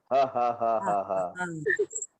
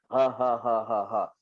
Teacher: huruf ha suara kita terbuka tapi terbuka separuh sahaja